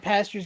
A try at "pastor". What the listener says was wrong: Are you saying pastures? Like cow pastures? You sound like you're saying pastures, like pasteurized. It's pastor. Pastor. Yeah, like alabaster.